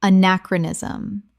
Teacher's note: 5 syllables with the stress on the second.